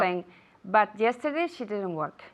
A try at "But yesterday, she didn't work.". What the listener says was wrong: Pero es que la T, I didn't hear the T, no había oído la T.